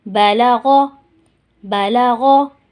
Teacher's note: غین موٹے حروفوں میں سے ہے تو ہم نے اس کو غین نہیں پڑھنا، اس کو موٹا کر کے ہی ادا کرنا ہے تاکہ اس کی صفت ہے وہ برقرار رہے۔